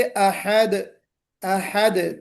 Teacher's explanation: अहद, दाल पर कलकला। जैसा कि मैंने आपसे कहा था कि 5 हरूफ कलकला होते हैं, उनमें से एक दाल है।